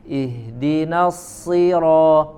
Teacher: Kemudian pada kata ihdina ya, pada surat Al-Fatihah, ihdinas sira, maka i-nya harus dibaca dengan sifat bacaan yang tipis, bukan tapi i ya, diturunkan rahang bagian bawah.